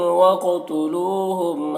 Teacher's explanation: قاف کو پر پڑھنا ہے، حروف مستعلیہ میں سے ہے، اور قاف میں قلقلہ بھی کرنا ہے۔